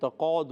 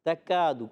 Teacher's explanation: کسی نے کاف کو قاف پڑھ دیا، تقاد نہیں، تکاد۔